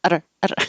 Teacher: going faster to make that tiny little tap